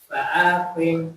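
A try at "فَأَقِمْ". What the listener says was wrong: Ayat panjang kok pendek. Pendek. Ayatnya panjang pendek.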